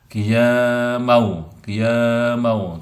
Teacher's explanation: mau idgham bi gunah, fathatain bertemu dengan waw